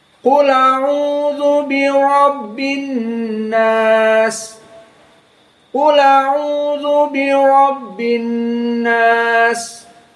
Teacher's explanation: Harokat hamzah a fathah dipindahkan kepada yang sebelumnya yakni lam. Jadi lam yang tadinya qul dalam keadaan sukun menjadi qula, menjadi fathah karena kepindahan dari harokat pada hamzah yang dihilangkan. · Lam bertemu dengan hamzah. Maka hamzahnya dihapus. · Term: naql